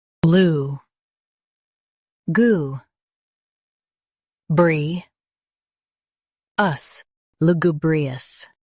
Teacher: Stress goo and keep bree smooth.